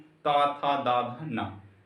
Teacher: और त वर्ग को हम दंत से बोलते हैं।